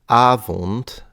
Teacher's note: So the O sounds very closed.